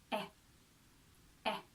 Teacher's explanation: The short sound is similar positioning of the mouth, but again, like we've seen in all the other videos of the other vowels, it's a short burst and it comes more from the back.